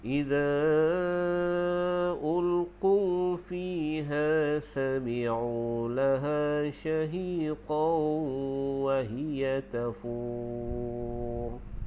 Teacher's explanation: Okey, ada boleh 2, 4 atau 6, jadi kita ambil 6 harakat. Dan ra di hujungnya kita baca dengan tebal. · Wahiyya tafur bila waqaf dia jadi mat arid lisukun. Di mat arid lisukun ni kebiasaannya kita panjang 6 harakat lah. Okey, ada boleh 2, 4 atau 6, jadi kita ambil 6 harakat.